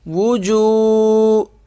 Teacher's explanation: واو پیش و، جیم واو پیش جو، وجو، یہ واو ساکن ہے، اسے ایک الف کے برابر کھینچ کر پڑھیں گے۔